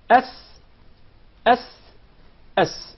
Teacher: So once again, before we go to the next letter, remember the letter Sin comes from the tip of the tongue, and the palates of the two front top incisors.